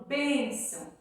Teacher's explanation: Então, a sílaba tônica é o bem.